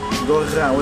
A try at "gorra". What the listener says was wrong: With the R. Roll your R's.